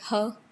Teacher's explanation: glottal or pharyngeal sounds that is produced in your throat here in glottis. That is h.